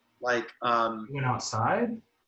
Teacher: you just kind of raise the tone of your voice, to kind of indicate there's a question mark. Like, you went outside?